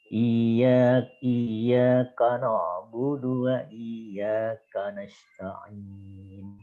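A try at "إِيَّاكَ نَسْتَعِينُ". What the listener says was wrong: Nasta'in ini dia dibuat menjadi tipis ya, jangan ditebalkan. Nasta'in.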